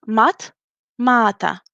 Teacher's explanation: And the vowel a in the middle of the stem turns to be long.